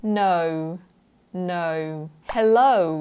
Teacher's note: It's actually a diphthong. So there are two vowels that are sliding into the other very smoothly. นะคะเป็นสระสองเสียงนะคะทุกคนที่มันไหลหากันแบบเนียนๆมันไม่ใช่ O แบบแบนๆแล้วก็ปากแบบนิ่งๆใช่ไหม O แบบเนี้ย O ใช่ไหมแต่มันเป็น O.